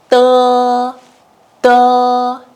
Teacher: you can feel that air flow is pretty weak if you put your hand in front of your mouth